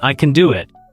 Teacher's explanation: Stress on can and do. The rest are quick again.